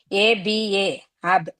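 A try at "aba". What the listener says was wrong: ఏ ఉంది కాబట్టి అబా,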